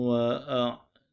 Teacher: Wakaf dengan sebutan huruf ba dan perlu dibaca dengan bacaan qalqalah.